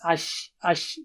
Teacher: when you say sheen from the middle of the tongue, so the sound of sheen, diffuses, ash, ash, don't say it from the tip of the tongue. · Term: Tafashi